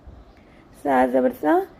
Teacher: یاد رہے اس آ میں سیٹی نہیں ہوگی